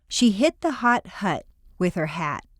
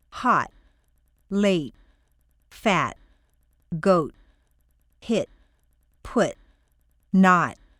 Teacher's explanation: when you hold a T as in hot your T is in the position for T but you keep the air in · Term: held position